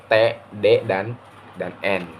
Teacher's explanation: bunyi T dan N itu dibentuk dengan lidah yang menyentuh atau dekat dengan alveolus. Alveolus itu adalah gusi bagian atas. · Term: bunyi alveolar